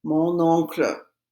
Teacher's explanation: the O starts with a vowel, so I have to pronounce the N in front of it